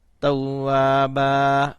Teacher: تا واو زبر تو، واو الف زبر وا، توا، با الف زبر با، توابا. وقف کی صورت میں ایک زبر پڑھیں گے اور ساتھ الف پڑھیں گے. اور اگر وقف نہیں کریں گے تو پھر دونوں زبریں پڑھیں گے تو دونوں زبروں کے آگے الف ادا نہیں کریں گے.